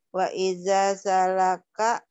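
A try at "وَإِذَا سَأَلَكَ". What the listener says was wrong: sa'alaka bukan salaka itu alif. Wa ida sa'alaka.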